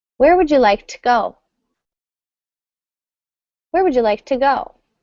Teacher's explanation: we would never pronounce to completely. It's going to sound just like a t.